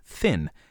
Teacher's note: the sound is passed through the nose the in thin is not a velar nasal but an alveolar nasal because it is pronounced in the alveolar ridge